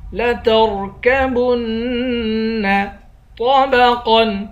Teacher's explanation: طا اور قاف دونوں کو موٹا پڑھیں گے اور یہاں غنہ نہیں کریں گے۔